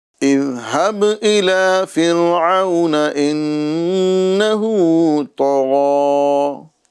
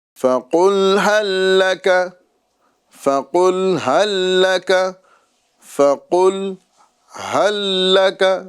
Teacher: اور فقل کا جو آپ کو قوف نظر آ رہا ہے، یہ بڑی قوف ہے، اور بڑی قوف کو پر کر کے، یعنی زبان کی جڑ اور نرم تالو سے ادا کریں گے تو ہی یہ قوف ادا ہو پائے گا۔